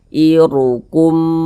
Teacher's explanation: Ada huruf ra, ada harokat dhammah, maka huruf ra dibaca tabkhim, dibaca tebal, sehingganya pangkal lisan kita naik terangkat ke atas ketika kita mengucapkannya